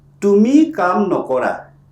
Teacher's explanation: That means you do not do work. Here, the O vowel is copied from the verb to the negative prefix.